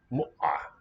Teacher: Looks like a cluster of glottal stop and ayin.